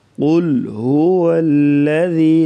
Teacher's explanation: لام کو بریک اور ذال کو نرمی کے ساتھ پڑھا جائے گا اور یہاں پر مد کریں گے.